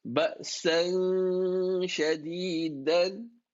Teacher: You read it with some level of merging with gunna.